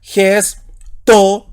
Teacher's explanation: Y en este caso es espíritu rudo, así que le antepongo el sonido J a la vocal y sería gesto.